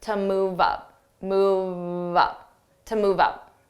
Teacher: So to will become unstressed, to move up.